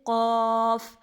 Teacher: اس کو ہم لوگ کریں گے 3 الف لمبا. اور قاف کا مخرج کیا ہے؟ زبان کی جڑ اور تالو کے نرم حصے سے. زبان کی جڑ اور تالو کے نرم حصے سے.